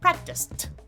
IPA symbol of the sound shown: t